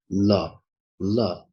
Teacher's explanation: the air from the lungs goes through the sides of the tongue. Okay, two sides of the tongue. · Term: lateral sound